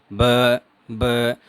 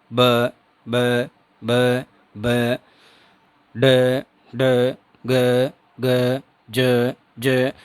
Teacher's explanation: बोलने का जो कंठ द्वार है इसमें वाइब्रेशन होता है। · और जब हम वॉइस साउंड्स का प्रोनंसिएशन करते हैं कि जैसे आप ब को बोलेंगे ब ब, तो इसमें होगा क्या कि जो लंग्स से एयर आ रही है, लंग्स से जो एयर आएगी वो जो वोकल कॉर्ड्स हैं इनको रैपिडली खोलने और बंद करने का काम करेगी। ब यानी एकदम से इनको खोलेगी और एकदम से इनको बंद कर देगी वापस। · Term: वॉइस्ड कॉन्सोनेंट साउंड्स